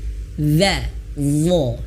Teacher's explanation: Ya, sifat isti'la dan juga itbaq. Dia memiliki sifat tebal, terangkatnya bahkan tertempelnya pangkal lidah.